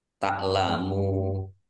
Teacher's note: Mat arid lis sukun dibaca panjang boleh 6 harokat, boleh 4 harokat, boleh 2 harokat.